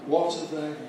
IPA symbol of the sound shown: ə